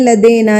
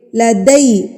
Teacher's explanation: یہ پڑھتے ہیں لدینا لدینا نہیں ہے یہ لدینا غلط ہے دال زبر یا دئی ہوتا ہے نہ کہ دے